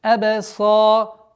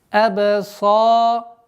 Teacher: Твердое произношение сад, после которой долгота в размере двух огласовок, естественно, удлинение фатха. Абсаруха. Долгота в размере двух огласовок, естественно, удлинение фатхи.